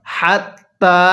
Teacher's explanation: এই তা এর মধ্যে আমরা এক আলিফ টান দিব কারণ যেই হরফের উপরে এরকম খাড়া চিহ্ন থাকবে ওই হরফটি আমাদের